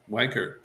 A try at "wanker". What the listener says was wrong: No. There's no R on the end. It's an A. You gotta get rid of the R's on the end, brother.